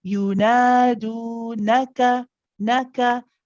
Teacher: We start off with a short 1 count to you, and then nadu, same length for both light letters, okay? For the do, of course, you'll notice that you circle the lips. For the na, you don't.